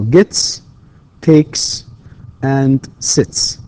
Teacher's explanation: the final sounds in these verbs, right, are voiceless. We say they are voiceless.